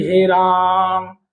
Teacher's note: पुत स्वर की बात करेंगे तो इसमें तीन मात्राओं का टाइम लग रहा है। जब तीन मात्राओं का टाइम लग रहा है तो यहां पे मतलब वो वाले आपके शब्द आते हैं जिनमें आप उन शब्दों को क्या करते हैं? · पुलुत स्वर की बात करेंगे तो इसमें तीन मात्राओं का टाइम लग रहा है।